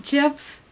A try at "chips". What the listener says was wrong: Chips with an F instead of a P.